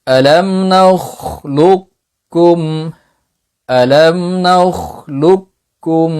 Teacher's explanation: আলাম নালুকুম সরাসরি লাম দ্বিতীয় কাফের সাথে গিয়ে যুক্ত হবে। এখানে প্রথম কাফটা উচ্চারিত হবে না। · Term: সম্পূর্ণ এদগাম, এদগামে কামিল